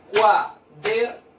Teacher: ¿Dónde cargo yo la voz? En la sílaba der. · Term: sílaba tónica